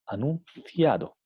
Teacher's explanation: Aquí tenemos una N interdental, porque viene seguida por un sonido interdental C